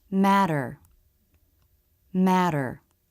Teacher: We simply let the front part of the tongue bounce against the roof of the mouth without stopping the flow of air. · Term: flap T